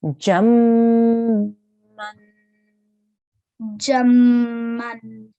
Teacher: we're going to join the jeem here to the meme with a prolonged nasal sound, but then we have to make the correct sound at the end as well.